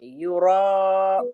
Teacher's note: यरा में हमजा की अदायगी करेंगे ऐन की नहीं करेंगे